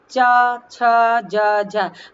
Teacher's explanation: हमारी जीभ का अग्रभाग जो तालु के अगले भाग को छूता है, उनमें च, छ, ज, झ ये शब्द आते हैं।